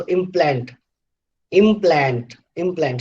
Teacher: So in implant, you have two syllables, and the second syllable plant is stressed.